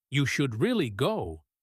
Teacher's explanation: our voice goes down on really to show emphasis